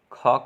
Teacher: ख का उच्चारण स्थान कंठ है